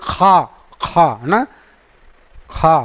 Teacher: इसको बोलने में जिह्वा का पिछला भाग जो है वो ऊपरी तालु से टच कर जाता है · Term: जिह्वा मूली